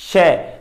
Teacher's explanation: ਜੀਭ ਦਾ ਵਿਚਲਾ ਹਿੱਸਾ ਤਾਲੂ ਨਾਲ ਛੋਂਦਾ ਹੈ, ਵਾਪਸ ਮੂਲ ਅਵਸਥਾ ਤੇ ਆਉਣ ਤੇ ਹੀ ਸ਼ੈ ਦਾ ਉਚਾਰਨ ਹੁੰਦਾ ਹੈ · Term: ਤਾਲਵੀ